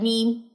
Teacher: میم دونوں ہونٹوں کے خشکی والے حصے سے جو ہے وہ ادا ہوتا ہے، میم. ٹھیک ہو گیا.